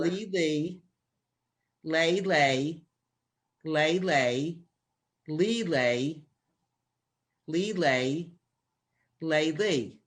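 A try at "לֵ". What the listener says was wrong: Okay, so the 3 dots like that are like in red, and you're saying them like A. Like in red, or like Edward or egg. So it's Lee, and then le.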